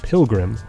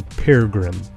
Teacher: The first r dissimilates to an l. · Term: dissimilation